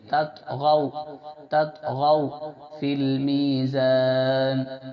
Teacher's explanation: جبکہ واو یا سے پہلے زبر آ جائے. واو یا سے پہلے زبر آ گیا تو اس کو نرمی سے جلد پڑھیں گے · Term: حرف لین